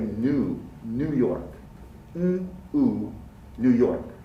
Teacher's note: The American pronunciation does not have the y.